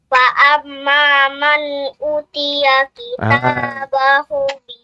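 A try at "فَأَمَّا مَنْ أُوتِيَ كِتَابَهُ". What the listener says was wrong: Kurang panjang sedikit, adik. Fa amma man utiya.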